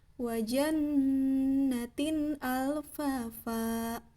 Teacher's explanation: jadi la-nya itu jelas ya, ujung sisi lidah dengan rongga atas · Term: lam